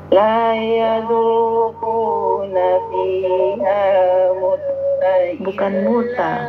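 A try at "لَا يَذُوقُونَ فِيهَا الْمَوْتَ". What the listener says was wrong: Bukan muta, mauta.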